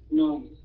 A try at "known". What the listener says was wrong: Known, chứ không phải known nha, known. Không phải known, mà là known. Xuống cái âm nghe.